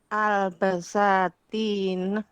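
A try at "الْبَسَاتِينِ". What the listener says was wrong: al-basatini itu ya, salah harokatnya. Al-basatini. Itu harokatnya diperbaiki, salah itu. Bukan al-basatina, al-basatini. Dia memang mamnu' minas sarf ala wazni mafa'il.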